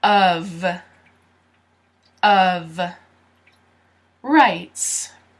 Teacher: the O sounds like a U, and the F sounds like a V.